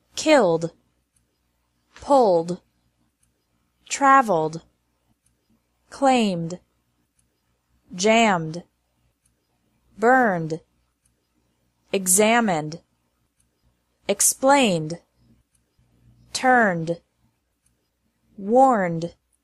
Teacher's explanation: ED is pronounced like D after verbs ending in an L, M, or N sound.